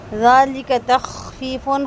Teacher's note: خا کو خرخراہٹ کے ساتھ واضح کر کے پڑھیں گے اور فا کی تنوین کے بعد میم ہے، یہاں پہ ادغام مال غنہ ہوگا، 2 حرکت غنہ کریں گے۔